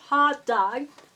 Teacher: we usually can't hear the T or G. We just catch some kind of plosive. Or we can hear the breath stops. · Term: tiny tsu